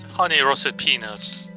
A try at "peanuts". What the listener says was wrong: You need to enunciate the T more in peanuts.